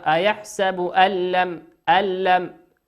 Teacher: لا توجد غنة، نون ساكنة أتى بعدها حرف اللام، واللام من حروف الإدغام بغير غنة.